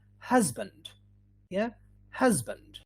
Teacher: in the middle just like music or easy the the sound in the middle would be z